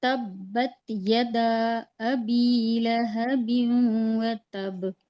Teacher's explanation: ता के ऊपर जबर की हरकत है। इसको हम बिल्कुल नहीं खींचेंगे क्योंकि जेर जबर पेश को नहीं खींचते, जल्दी पढ़ते हैं ना।